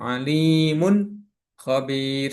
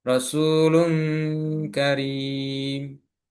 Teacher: Nunnya samar dan mendengung.